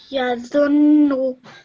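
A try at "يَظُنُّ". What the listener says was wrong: Well done. Excellent.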